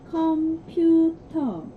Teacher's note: there is no R sound in Korean. So in Korean you say computer without the R at the end.